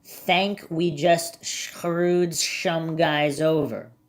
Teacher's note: I believe he pronounces his S like an SH in some instances. Some people do, especially Southerners in my experience.